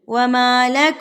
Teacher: नाक में आवाज लेकर जाएंगे एक हरकत के बराबर · ناک میں آواز کو لے کے جائیں گے ایک حرکت کے برابر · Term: गुन्ना, غنہ